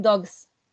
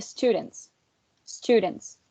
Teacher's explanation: in students the sound is voiceless right which makes the plural sounds sound to be voiceless too